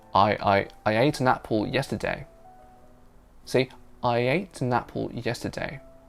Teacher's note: There was a tiny bit of y between I and ate. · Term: intrusion